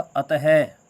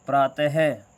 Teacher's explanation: है के रूप में, है के रूप में उच्चारित होती है, ठीक है। यानी कि विसर्ग जो है वो शब्द के बाद लगते हैं और बाद में लगकर है के रूप में उच्चारित होते हैं